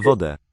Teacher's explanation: Sometimes it's the nasalization of the vowel, shown by the hook.